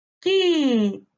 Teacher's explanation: la sílaba tónica la encontramos en la anterior a la antepenúltima sílaba